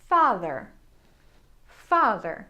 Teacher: For words that have the R sound at the end of the word, the R sound is actually more relaxed.